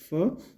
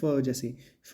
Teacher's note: फ जब भी उच्चारण करेंगे है ना फ तो आपका निचला होठ और ऊपर वाले दांत जब आप आपस में मिलते हैं तो ही ये आपकी ध्वनि आती है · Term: दंतोष्ठ